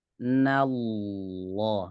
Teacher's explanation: Lamnya langsung tebal dari awal.